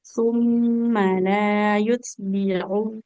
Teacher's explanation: Kemudian mimnya nggak boleh panjang karena fathah tidak bertemu alif.